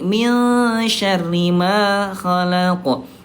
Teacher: Kalau shin dia kan tengah lidah awsat